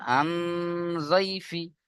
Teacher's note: এই যে নুন সাকিনের পরে ইকফার 15টি অক্ষরের মধ্যে জদ এসছে, তাই না? তাই নুন সাকিনের আওয়াজকে নাকে তুলে একালিপ গুণনা করে পড়তে হবে।